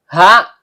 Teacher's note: Ha, tenggorokan bagian bawah.